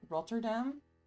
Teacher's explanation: in English I would say Rotterdam which doesn't have the rolling R. I mean I can skip the rolling RS in English.